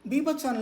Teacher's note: బీభత్సం లో రెండో బా దగ్గర మహాప్రాణం ఉంటుంది